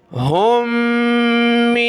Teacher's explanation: یہ چشمے والی ہا کو دوسری میم کے ساتھ ملایا, میم کو نون کے ساتھ, ناک میں آواز پیدا کریں گے